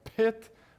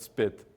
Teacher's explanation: pit, with a long puff of air, but spit with no puff of air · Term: aspiration